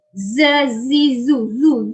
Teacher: Bunyi z tu, bunyi macam bunyi lebah bila menyebut huruf zai ni. Zazizu zu. Zul lam jangan muncung.